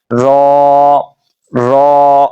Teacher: रा जुबान की नोक और मुकाबिल के तालु से अदा होता है। ये जुबान की जो नोक है ना उसके सामने जो बिल्कुल तालु है ना वहां पे जुबान मस होगी तो ये रा सही तरीके से अदा होगा।